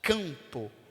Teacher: Eu estou falando aqui a vogal nasal, o campo.